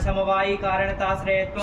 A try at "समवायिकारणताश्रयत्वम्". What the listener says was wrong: समवायी कारणता श्रेय बोला,